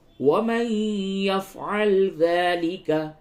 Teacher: نون ساکن کے بعد یا ہے، ادغام مع الغنہ ہوگا